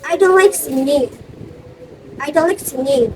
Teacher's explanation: This is fall intonation because I'm sure of it.